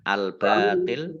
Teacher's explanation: baca agak berat ya jangan sampai sama dengan ta